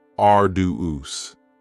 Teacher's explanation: arduous has 3 syllables, and the stress is on the first syllable